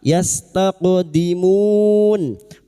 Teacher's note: huruf qaf yang hakikatnya sukun adalah qalqalah sughra, jangan lupa dipantulkan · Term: qalqalah sugro